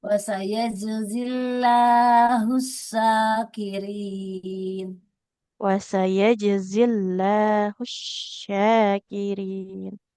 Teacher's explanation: lafal Allah lamnya tipiskan karena huruf sebelumnya kasrah